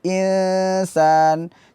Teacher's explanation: Jadi yang tempelkan huruf ke huruf nun, akan tetapi dilepaskan dari huruf nun dan alirkan suara ke mulut sedikit. Jadi dominan suara ke hidung, akan tapi ada suara dari mulut. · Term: ikfa